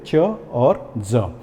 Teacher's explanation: एफ्रिकेट शब्दों में क्या होता है, जिस प्रकार से हम प्लॉसिव में देखते हैं कि पूरी तरीके से आर्टिकुलेटर्स बंद हो जाते हैं और उसके बाद खुलते हैं, इसमें भी आर्टिकुलेटर्स पूरी तरीके से बंद होते हैं और उसके साथ में थोड़ी सी घर्षण होती है, फ्रिक्शन होती है